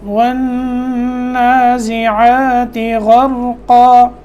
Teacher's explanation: یہاں نون مشدد میں غنہ کریں گے